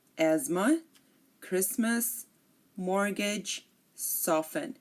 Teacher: we are not pronouncing the T in any of these words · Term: silent